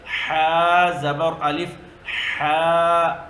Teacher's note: ہا حروف حلقی ہے، اس کو حلق کے اندر استعمال کرنا ہے